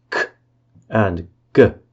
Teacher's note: K and g are velar plosives.